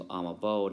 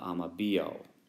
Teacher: two vowels coming together, the first one tends to disappear. So it becomes amabo, not amabio.